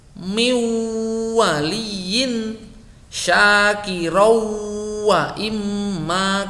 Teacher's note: Nun tidak bertanda atau tanwin deret bertemu wawu, dibaca wawu disertai dengung yang lama. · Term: idgham bi gunnah